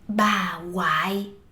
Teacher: Oh, I don't seem to hear the ng sound. · in casual spoken Southern Vietnamese, we can drop the ng, the q, and the h when the next sound is the w sound